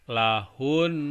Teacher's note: ketika kita baca hunnya yang mau diwakofkan itu ditekan 2 harkat